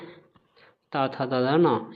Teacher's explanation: ये हमारे दंत व्यंजन होते हैं